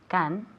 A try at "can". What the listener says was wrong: K. Es un sonido más fuerte. Can.